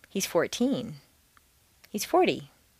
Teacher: teen can be thought of as a separate word in terms of intonation